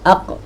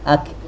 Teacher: Isti'la pada qaf dan istifal pada kaf.